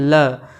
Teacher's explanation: ल बोलते समय आपके जीभ के दोनों किनारों से वायु आ रही है। आप ल बोल के कोशिश करिए ल, तो आपके जीभ के दोनों किनारों से वायु आ रही है। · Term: पार्श्विक व्यंजन